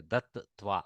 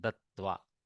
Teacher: You have to pause a little bit between the two tas. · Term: dvitva of takara